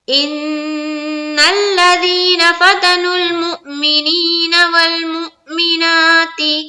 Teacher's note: لیکن حمزہ آ گیا تو اب کیا کرنا ہے؟ واو کا کوئی بھی کام نہیں ہے، حمزہ کا اب کام ہے، یعنی کہ جھٹکا دینا ہے